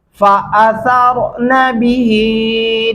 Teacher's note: ज़बर वाला लफ्ज़ का तान लंबा नहीं होता। फ़असरना बिही आइन गले से अदा करेंगे।